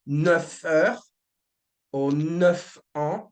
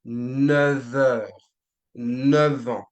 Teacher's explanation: the F would turn into a V, basically, like orally speaking, I mean. So you would not say 9 heures or 9 ans, but you would say 9 heures, 9 ans, right? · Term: V sound